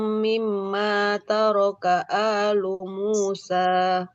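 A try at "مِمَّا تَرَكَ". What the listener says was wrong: Mim yang kedua dia terlalu cepat Ibu gunahnya. Mim mataraka alu Musa.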